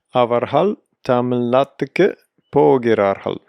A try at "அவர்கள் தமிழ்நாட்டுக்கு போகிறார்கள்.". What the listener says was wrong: Very nice, except Tamil. தமிழ்நாட்டுக்கு தமிழ்நாட்டிலிருந்து தமிழ்நாடு. அவர்கள் தமிழ்நாட்டுக்கு போகிறார்கள். Tongue between the teeth.